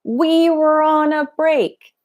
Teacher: He's not shouting it, but he's emphasizing every single word.